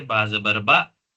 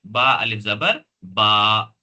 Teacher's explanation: दोनों में थोड़ा सा फर्क है, इसको हम नरम और जल्दी आवाज में पढ़ेंगे बा जबर बा, और इसको हम थोड़ा सा खींचेंगे बा अलिफ जबर बा